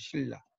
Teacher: 리을이 있기 때문에 니은이 리을로 바뀌는 거죠